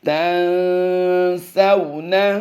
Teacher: سو کو واولین ہے، یہاں پر لمبا نہیں کریں گے